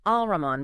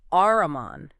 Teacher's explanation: The L disappears into the R. Exactly. It assimilates. · you don't pronounce the lam at all. Ah, so it's not Al-Rahman, but Ar-Rahman. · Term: Lam Shamsiya, lam shamsiya